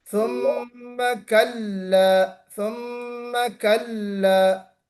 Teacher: پہلی بات تو اس میں قلہ قاف نہیں نکالنا چاہیے، یہاں پہ قلہ یہ قاف نہیں ہے. · کلا کو لام کو پر نہیں کرنا، موٹا نہیں پڑھنا، باریک پڑھنا ہے.